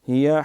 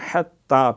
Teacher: پہلا ہیا 2 آنکھوں والا ہا پیٹ سے، حتی یہ حلق سے